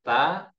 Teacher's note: ada hembusan nafasnya dia tetap ada aliran nafasnya